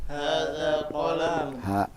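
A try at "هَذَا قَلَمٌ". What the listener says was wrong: Qalamun atau qalamun. Nah, tidak ada yang panjang. Hada qalamun.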